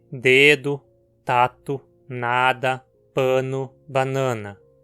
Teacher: Em português temos 3 delas: tá, dá e na. Preste atenção como a língua toca na parte de trás dos dentes. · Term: consoantes dentais